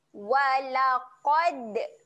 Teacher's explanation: Dal mati sifatnya ada lantun